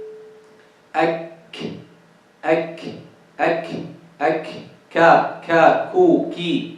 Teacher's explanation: in the kaf, we touch both. We touch this area in which the hard palate meets with the soft palate together. We touch them with what? The back part of the tongue.